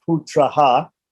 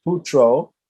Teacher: Putro is putraha, followed by bha, which is a soft consonant or a voiced consonant, right? So it makes the short a visarga of putraha, which means nominative singular of putra, the son, turn into an o by sandhi.